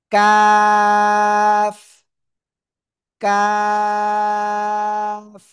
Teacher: চিকুন আওয়াজে চার আলিফটা নিয়ে উচ্চারণ করব